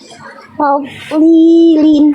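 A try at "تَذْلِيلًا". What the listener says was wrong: Nah, tinggal dikasih ngalir suaranya lagi dikit lagi. Tablilin. jadi tebalnya udah bagus, tebalnya makanya udah bagus, cuman ngalirnya belum, masih agak mampet tuh bunyinya gitu.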